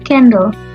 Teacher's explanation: Syllable pertama, can, adalah stress syllable. Oleh karena itu, can dilafalkan dengan penekanan yang lebih daripada suku kata kedua, the, yang merupakan unstressed syllable.